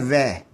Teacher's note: व का उच्चारण स्थान होगा दांत और ओष्ठ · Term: दंतोष्टम